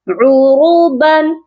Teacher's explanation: را کو موٹا کریں گے، با کی تنوین پر غنہ نہیں کیا جائے گا